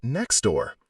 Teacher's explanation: The phrase next door almost always sounds like next door. The T vanishes to make it easier to say. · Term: illision